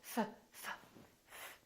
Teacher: There's no vibration in my vocal cords, so the F is actually a voiceless sound.